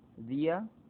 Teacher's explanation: tengo una vocal débil, una vocal fuerte y recae sobre la débil la mayor fuerza de voz. Hiato ocasional.